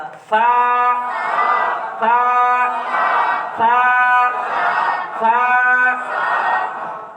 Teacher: সায়ের উচ্চারণ জিহ্বার অগ্রভাগ সামনের উপরে দুই দাঁতের আগা সঙ্গে লাগাতে হবে। · সাটা কি গোড়ায় নয়, বরং দাঁতের আগাতে লাগাতে হবে জিহ্বাটাকে